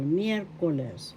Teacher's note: The accent is on the first syllable, miércoles.